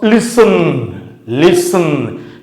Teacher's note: The first syllable is stressed. Listen. But the second syllable is not stressed.